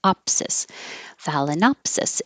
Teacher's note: I knew that the opsis ending, the suffix, would be stressed